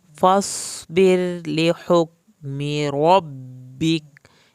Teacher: میں نے را کو پتلا پڑھا ہے کیونکہ را کے پیچھے زیر ہے